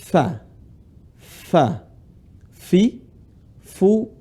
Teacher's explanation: posisi tempat keluar huruf Fa gigi seri atas ketemu bibir bawah